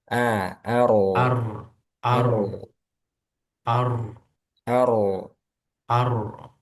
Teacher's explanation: rnya tebalkan lagi. Ar sukun sebelumnya fathah.